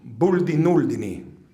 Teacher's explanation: Remember the stress on the first syllable.